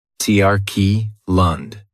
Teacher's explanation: That last syllable has the schwa